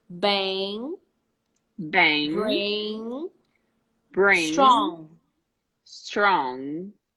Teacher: you don't say bang you know you don't let that air go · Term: ing